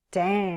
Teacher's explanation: The strong, slow fall is a natural pattern when you say a moderate curse